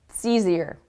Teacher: I barely even hear the word it.